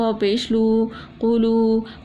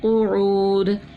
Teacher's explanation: پیش تھا نرمی سے پڑھا، واو مدہ تھا ایک الف کے برابر کھینچ کے پڑھا